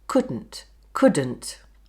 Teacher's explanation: The glottal stop is a silence, when the D is dropped until the start of the, ə. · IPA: Coulʔn't